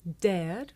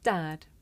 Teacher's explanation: some learners may find it difficult to tell the difference between this sound air and another sound the short vowel ah